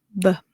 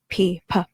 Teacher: B is voice sound, b, and P is voiceless or unvoiced